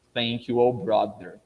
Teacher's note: você tende a pronunciar o th com a língua batendo no dente